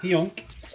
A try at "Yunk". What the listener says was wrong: The H is silent. No, it's silent. The H.